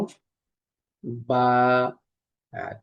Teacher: আমাদের যে ঠোট এখানে যে ভিজা জায়গা অংশটা অংশটুকু আছে এই অংশটিকে বা উচ্চারিত হয়